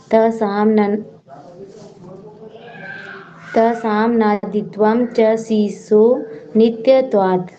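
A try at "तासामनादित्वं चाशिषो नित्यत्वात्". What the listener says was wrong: चा नहीं, ये चा बन गया, आशीषो था ना, और उसके अब आगे चा लग गया, चा शीशो बन गया।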